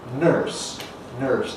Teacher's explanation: in American English and in the west of England, the R coalesces with the vowel to give you nurse, nurse, and you get an R-coloured vowel, nurse. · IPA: /nɝːs/